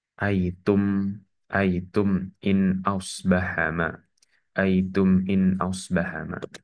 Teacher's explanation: Mim sukun bertemu dengan hamzah sehingga hukumnya adalah izhar syafawi. Mim sukunnya dibaca dengan jelas.